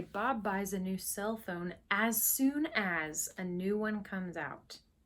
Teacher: then we emphasize as soon as